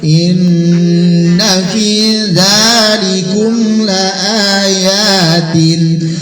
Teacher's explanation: gunnah musyaddadah, nun tasdid dengung 3 harokat